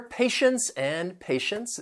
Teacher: the stress is on that first syllable